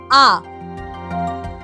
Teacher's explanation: আ জিভ একদম তলায় নেমে গেছে, মুখের মধ্যেকার হাঁয়ের পরিমাণ সবচেয়ে বড়, আর জিভ তখন না সামনে না পেছনে, ঠিক কেন্দ্রীয় জায়গায়, এবং ঠোঁটটাও না পুরোপুরি ছড়ানো না পুরোপুরি কুঞ্চিত, বরং মাঝামাঝি অবস্থায় রয়েছে। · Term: নিম্ন বিবৃত কেন্দ্রীয় মধ্যস্থ স্বরধ্বনি